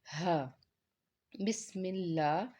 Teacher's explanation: ہا حروف حلقی سے ہے، اور حلق کے نچلے حصے سے اس کو ادا کرتے ہیں، اور آواز جو ہے وہ باہر، سانس باہر نکلتا ہوا محسوس ہوتا ہے